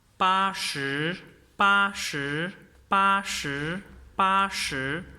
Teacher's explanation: is the first tone and second rising tone